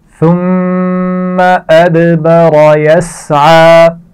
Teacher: اور را کو موٹا پڑا جائے گا. یسعى سین کی آواز میں سیٹی ہوتی ہے, اس کا خیال رکھیے اور عین کے مخرج کو واضح رکھنا ہے.